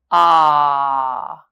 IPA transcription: ɑ: